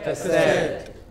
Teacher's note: The first syllable is hardly heard. It is not ka, it is just ka.